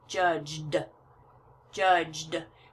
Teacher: All those last consonants are kind of smushed together. Smushed means to push them all together, and the E is silent.